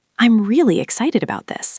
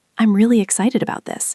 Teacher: Did you hear how my voice went up on the word really? That rising tone shows enthusiasm and emotion.